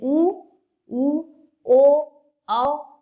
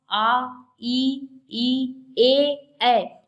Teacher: जिन स्वरों के उच्चारण में होठ वृत्तमुखी या गोलाकार होते हैं उन्हें वृत्तमुखी वर्ण कहते हैं